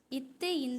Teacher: நாவின் நுனி மேல்வாய் பல்லின் அடியை தொடுறதாலயும் பிறக்குது